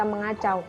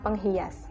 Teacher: fonem n atau nasal pada morfem men dan pen berubah menjadi eng apabila bentuk dasar yang mengikutinya berawal dengan fonem k, g, x, h, dan huruf vokal